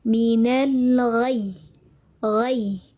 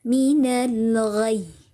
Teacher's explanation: Ya, ada penaikan sedikit intonasinya. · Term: nabar